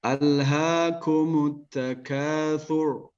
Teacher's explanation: huruf ra dibaca tebal